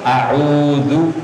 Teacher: Ini gak boleh ya, ini nambah alif. Jadi A-nya jangan sampai dibaca panjang. Jadi harus cepat A-U-Zu, U-nya baru panjang.